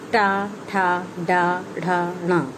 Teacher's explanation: इनको मूर्धन्य कहा जाता है क्योंकि इसका उच्चारण करते समय जीभ मूर्धन्य यानी ऊपर उठी हुई महसूस करेगी।